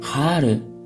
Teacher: le H, en début de mot, se prononce en allemand avec vigueur.